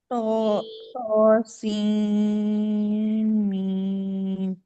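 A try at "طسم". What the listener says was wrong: हाँ नहीं, सीन को भी 6 काउंट खींचना है, ठीक है।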